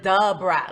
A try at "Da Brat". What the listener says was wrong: You said the Brat.